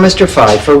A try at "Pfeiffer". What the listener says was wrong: That's Pfeiffer. The P is not silent.